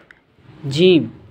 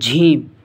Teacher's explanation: ज़बान के दरमियान और तालु के दरमियान से इस कलमे को अदा किया जाता है। ये हुरूफ़ शजरिया में से है।